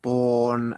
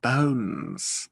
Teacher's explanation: one starts with the very small mouth one starts with quite a tall mouth and gets smaller